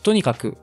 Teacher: L'accent qui descend dès le premier mot là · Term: pitch accent